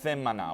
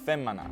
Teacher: at some point they merged th and f, leading to themana getting pronounced femana